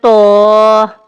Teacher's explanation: زبان کی نوک اوپر کے اگلے دانتوں کی جڑ سے یہ ادا ہوتا ہے، لیکن پورے منہ میں وزن اور بھاری پن پیدا ہوتا ہے